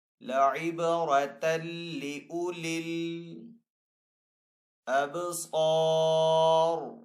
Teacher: با حروف کلکلہ میں سے تو با کے اوپر یہاں پہ کلکلہ کریں گے. صاد حروف مستعلیہ میں سے تو صاد کو یہاں پہ پر پڑھیں گے.